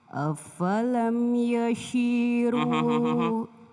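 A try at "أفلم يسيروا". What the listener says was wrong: Afalam yasi. Bedakan shi dengan si. Kalau syah ada titiknya 3 di atas. Kalau ini tidak ada.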